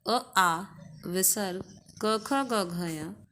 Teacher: अ आ विसर्ग क ख ग घ य ये कंठ से बोले जाते हैं